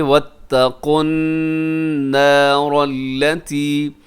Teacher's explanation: آیت نمبر 131 دیکھیے گا واتقوا النار التي اعدت للكافرین، جی یہاں پہ واتقوا النار التي، یہاں واتقن میں قاف موٹا رکھیے گا اور النار میں نون کے اوپر تشدید ہے، غنہ ہے،